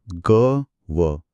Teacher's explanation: गळामध्ये स्पष्ट व्हायब्रेशन्स म्हणजे कंपन जाणवतात. >> अगदी बरोबर कारण हे दोन्ही नादयुक्त म्हणजेच मृदूध्वनी आहेत. आता